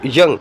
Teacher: You will come to know the front of the tongue is touching the hard palate. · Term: palatal